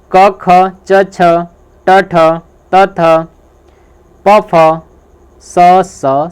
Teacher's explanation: जिन वर्णों के उच्चारण में नाद की जगह केवल श्वास का उपयोग होता है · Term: अघोष व्यंजन